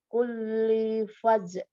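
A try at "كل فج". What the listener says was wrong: Jangan terlalu buru-buru berhentinya karena jimnya bertasydid. pantulannya agak ada jeda kayak kita bilang kulli fajji. Nah, maka kulli fajj gitu ya. Jangan buru-buru kol-kolahnya. Fajj.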